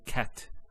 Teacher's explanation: a stop on the letter t so we say cat so the t doesn't have any vowel associated with it it's actually just a stop on the t so in this case we would actually put sukun there cat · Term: sukoon